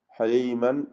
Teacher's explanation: തൻവീനിനെ ഇൽഹാർ ഹൽഖി നൽകി മണിക്കാതെ വെളിവാക്കുക